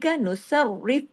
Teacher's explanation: रा को बारीक भी करना है र को दो मर्तबा भी पढ़ना है क्योंकि र पे तशदीद है